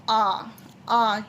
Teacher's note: विव्रत स्वर मुख द्वार पूरा खुलता है इसमें